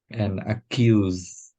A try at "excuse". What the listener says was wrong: No, because what you just Because what you're doing there. Otherwise, if you leave out this if you leave out this k, you're saying accuse. Excuse. Accuse me is very different meaning, of course. You know what accuse is, yeah? Accuse is like pointing the finger. So excuse. So we need that excuse.